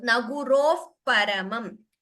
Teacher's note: So there is a expulsion of air and we close the lips. That is how upadhmaniya is pronounced.